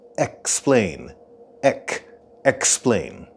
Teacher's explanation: And if you listen carefully, you'll hear a slight k sound in the word explain.